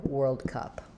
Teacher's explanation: So in the IPA, you're just going to see and but as you're saying it, whirl, if you think of kind of gliding between those two sounds, it should help. And then cup is just a straightforward schwa, sound.